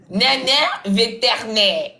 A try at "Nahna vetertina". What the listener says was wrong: C'est pas nana. Nahna.